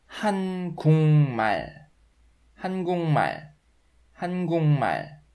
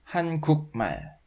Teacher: I can see the initial m consonant in the last letter of the word, and it turns the final g consonant in the former block to nasal sound. So it is pronounced 한국말, 한국말, 한국말, instead of 한국말.